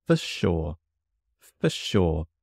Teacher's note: The for and sure blend together.